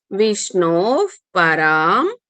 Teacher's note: విష్ణో తర్వాత విసర్గ ఉంది ప ముందు వచ్చిన విసర్గ కాబట్టి ఎఫ్ సౌండ్ రావాలి